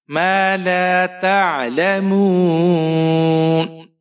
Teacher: آپ نے یہاں پر مد عارض کرنی ہے, کیونکہ حروف مدہ کے بعد اگر آپ عارضی سکون کرتے ہیں تو وہاں پر آپ مد عارض کریں گے